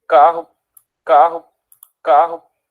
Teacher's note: na palavra carro este falante produz uma fricativa